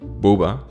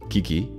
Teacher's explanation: to pronounce boba you need to place your mouth in a round shape and make use of long vowels whereas for kiki you have to repeat a short syllable of sharp sounds